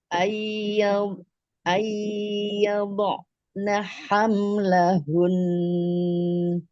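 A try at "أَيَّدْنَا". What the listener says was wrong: Boleh diulang, coba nun ketemu ianya belum masuk ke hidung sama sekali sebenarnya.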